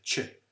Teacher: palatalization that has become so strong that the sound has actually become an affricate so what an affricate is is a sound that has a